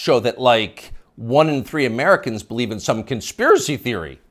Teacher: You'll notice the upspeak, the rising inflection at the end of the sentence.